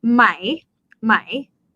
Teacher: the question particle is supposed to be pronounced as rising tone my my however in conversation we dropped to mai so the